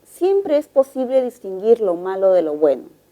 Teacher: como observamos el tono es descendente